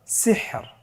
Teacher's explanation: এখানে লাস্টে যে রটি হরফটি রয়েছে এ হরফটিকে মোটা করে পড়া যাবে না। পড়তে হবে পাতলা করে। তাহলে আমরা বুঝতে পারতেছি র হরফটি ওয়াকফের কারণে সাকিন হলে এবং তার পূর্বে সাকিন থাকলে এবং তার পূর্বে যদি জের থাকে তাহলে র হরফটিকে পাতলা করে পড়তে হবে।